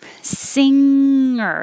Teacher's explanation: You can say it with the g in the middle, singer, or without and singer. So the back of your tongue is very high, touching the top of your mouth and kind of sliding back, not losing contact.